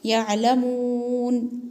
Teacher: زبر لا، یعلا، میم واو پیش مو، نون زبر نا، یعلمون، یہاں پہ واو مدہ ہے اور واو کو تھوڑا کھینچ کے پڑھیں گے